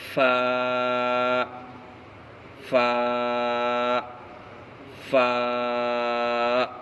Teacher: فا کا مخرج نیچے کے ہونٹ کی تری اور اوپر کے دانتوں کا کنارہ سے فا ادا ہوتا ہے، جیسے فا فا فا، قاف قاف قاف قاف، قاف کا مخرج زبان کی جڑ اور اوپر کا تالو، جیسے قاف قاف قاف قاف، کاف کاف کاف کاف کاف۔